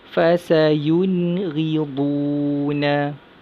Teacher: Seterusnya, nun mati bertemu huruf ghain dalam satu kalimah. Jadi nun mati tu kita baca dengan jelas, nyata dan terang, baca dengan izhar halki.